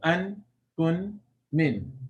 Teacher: Noon, the tongue stays on that top area, behind on the gums behind the upper teeth.